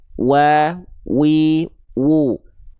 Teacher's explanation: Nah, tapi kedua bibirnya diapain huruf wau ini? Nah, kedua bibirnya posisinya maju ya. sebagaimana kita mengucapkan huruf U.